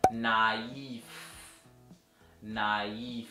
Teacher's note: Mas agora que tem o trema, é naif. Então o trema vem aqui para justamente quebrar esse ditongo e pronunciar de maneira separada as vogais